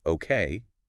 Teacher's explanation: Now if I say okay with my voice going up at the end. That's a question like are you sure or do you agree?